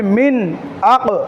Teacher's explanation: এই হরফগুলো যদি নুন সাকিন বা তানবিনের পরে যদি হয় তাহলে নুন সাকিনকে গুন্না ছাড়া স্পষ্ট করে পড়তে হবে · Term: ইজহার